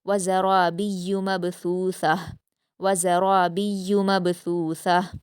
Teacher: व ज़रा में रा को पुर पढ़ेंगे और मबसूसा में बा पर कलकला करिए।